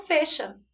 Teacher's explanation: Numa variedade linguística, se você estivesse numa região em que isso acontece, que a gente tem sons do E mais abertos, né? Comumente isso acontece na região Nordeste, eles gostam, né, de falar o E com um som mais aberto.